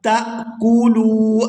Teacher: تا کو حمزہ ساکن کے ساتھ ملا کر ادا کریں گے، تا حمزہ زبر تا جھٹکے کے ساتھ ادا کیا جائے گا